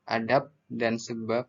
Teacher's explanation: pada silaba akhir kata adab dan sebab diucapkan P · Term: netralisasi